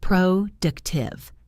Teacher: For productive, the stress is on the second syllable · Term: word stress